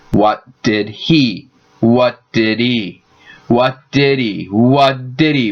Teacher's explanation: eat for lunch what did he are all function words so the space between those words can disappear when native speakers say them at speed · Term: reduction